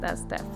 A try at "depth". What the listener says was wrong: Not death. Depth. It always sounds like you're saying death.